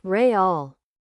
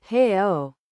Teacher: But in Brazilian Portuguese, it was real. The leading R had become an H. The trailing L had become a U.